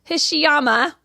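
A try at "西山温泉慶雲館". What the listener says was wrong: Except that's an N. I said Hishiyama.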